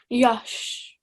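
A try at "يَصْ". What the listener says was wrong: but no sh, yes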